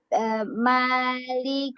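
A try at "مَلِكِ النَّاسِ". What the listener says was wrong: Awas, jangan panjang maknya.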